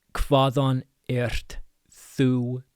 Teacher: So, again, we have HV sounds like KV. You have an eth in the middle, so a voiced th.